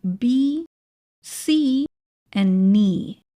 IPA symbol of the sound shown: iː